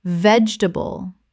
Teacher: Three syllables in natural speech. The middle syllable almost disappears. Example She grows her own vegetables in the garden and there is always something fresh on the dinner table.